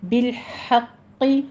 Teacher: ہے، ارسلناک، نا میں فتح قائمہ 2 کاؤنٹ کریں گے، بالحق، ہا وسط حلق سے ادا کریں گے